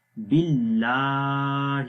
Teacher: اللہ کا نام ہے، اس سے پہلے زیر ہے با کے نیچے، تو اس لیے اللہ کا نام باریک پڑھیں گے